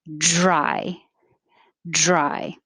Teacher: the vowel and dry is i so you need to start low and move your tongue high